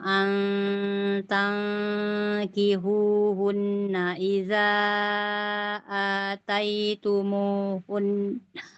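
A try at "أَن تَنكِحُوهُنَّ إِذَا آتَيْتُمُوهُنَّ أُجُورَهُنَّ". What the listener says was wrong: Coba nun bertasydidnya ditahan lagi ya.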